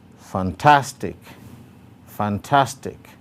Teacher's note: The stroke again is on the second syllable, tas.